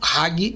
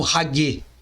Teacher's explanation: o g final Deve ser duro e não é como rague